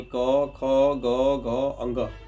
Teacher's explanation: अब ये जो क वर्ग है, क वर्ग का जो उच्चारण स्थान है, वह है आपका कंठ। अब जब भी क वर्ग यानी क, ख, ग, घ, अंग जब भी आप बोलते हैं तो आप उच्चारण करके देखिए इसका आवाज कहां से आता है? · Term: कंठ वर्ण